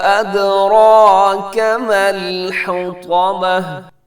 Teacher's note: اس میں جو پہلے مد ہے اسے مد منفصل کہتے ہیں، 4 سیکنڈ لمبا کیجیے گا